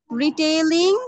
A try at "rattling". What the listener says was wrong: Retailing না rattling. R-A-T কে তুমি retail বলো? Rat Rat. T. Rattling.